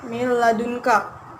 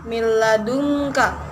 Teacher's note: Nun matinya dimasukkan ke dalam huruf lam. Jadi lamnya bertasdid dan tidak didengungkan. Jadi langsung bacanya miladunka, tidak didengungkan miladunka, tidak begitu, namun langsung dimasukkan ke dalam huruf sesudahnya menjadi miladunka. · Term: idgham bila gunnah